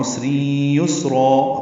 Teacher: را الف مدہ مد عوض، دو حرکات لمبا کریں گے۔